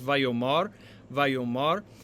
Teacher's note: with the accent on the penultimate syllable